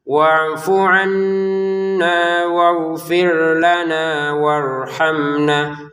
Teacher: Wafu pendek ya, jangan wafu annya pendek saja. Wafuna di sini nunnya bertasydid. Kita dengungkan.